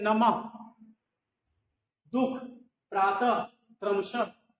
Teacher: इसका उच्चारण आधे ह की तरह होता है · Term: विसर्ग